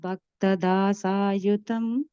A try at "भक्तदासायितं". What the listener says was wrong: A third line, last word, Bhakta Dasa Yitam. You said Yutam. You have Yitam, right?